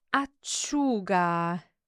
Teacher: the emphasis is on the U, so acciuga.